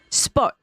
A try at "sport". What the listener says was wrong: You don't pronounce that last T.